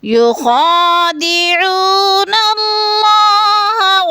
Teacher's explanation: اللہ کو پر کر کے پڑھیں گے کیونکہ اللہ سے پہلے لفظ نون کے اوپر زبر ہے